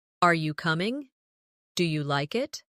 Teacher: Another important element is intonation when asking questions. In English, our voice usually rises at the end of a yes or no question. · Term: rising tone